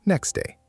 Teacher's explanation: In slow speech, next day. But in fast speech, the T often disappears. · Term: elision